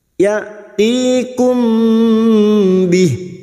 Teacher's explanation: mim sukun bertemu ba, maka mendengung selama 3 harakat ikhfa syafawi. · Hamzah sukun jangan samakan dengan ain. Hamzah memiliki sifat syiddah, tertahannya suara.